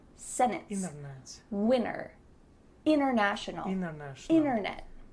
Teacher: You can say sentence with a T, it's fine, but you're gonna hear native speakers when we're speaking quickly, you're gonna hear us completely cut out that T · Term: glottal T